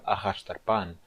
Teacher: na palavra arrastar Pan a sílaba tônica é a última sílaba é a sílaba Pan